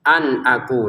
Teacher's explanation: nun sukun bertemu hamzah. Ini dibaca dengan jelas ya